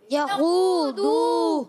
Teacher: मगर खू और दू ये वाव मद्दा हैं दोनों, खू वाव मद्दा, दू वाव मद्दा, तो इन दोनों को खींचना है एक एक अलिफ